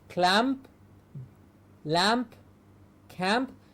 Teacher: It's the nasal m and the plosive p